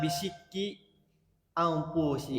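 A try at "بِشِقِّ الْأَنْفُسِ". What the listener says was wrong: Itu di tasydid bisikil anfusi.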